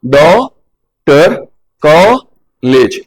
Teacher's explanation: पूरी नहीं है, आ और ओ पूरा नहीं आ रहा, बीच की ध्वनि आ रही है। ना तो आ ही पूरा आ रहा है, ना ओ ही पूरा आ रहा है, बीच की ध्वनि है। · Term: आगत